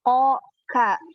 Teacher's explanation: qaf sama kaf itu keluarnya sama-sama dari pangkal lidah ya. Ko ka satu tempat.